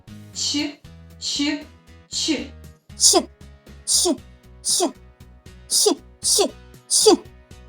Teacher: Його вимова цікава. Під час вимови звука ч губи трохи витягнуті вперед. Кінчик язика міцно притиснутий до верхнього піднебіння. Вимовляється різко і без голосу. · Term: Звук ч